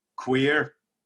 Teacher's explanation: it's a hard r almost like a hard kind of texas r